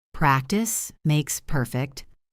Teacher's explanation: The S sound as the end of practice connects to the M of makes, and the S of makes connects to the P of perfect.